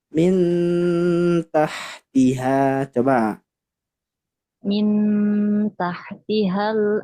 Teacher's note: Jadi dia lebih dekat dengan ta langsung. Karena nun dekat dengan ta. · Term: ikhfa aqrab